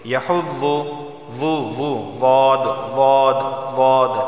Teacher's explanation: ضاد کا مخرج حافہ لسانی یعنی زبان کی کروٹ اوپر کے داڑوں سے لگے گی